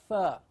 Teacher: The air is flowing out continuously.